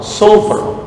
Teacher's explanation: Sama dengan sin makhraj shad itu, hanya perbedaannya isti'la, lidah naik ke atas.